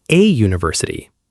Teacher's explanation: we say a university because university begins with a Y sound. Even though the first letter is U, the sound is like U, so we use a instead of an.